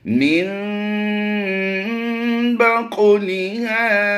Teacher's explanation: काफ को हुरूफ मुस्तालियां होने की वजह से पुर करेंगे और हुरूफ कलकला में इसका शुमार भी होता है कि यहाँ पर हमने कलकला भी करना है, क्योंकि हुरूफ कलकला जब साकिन होते हैं या मुशद्दिद होते हैं तो इनमें कलकला किया जाता है।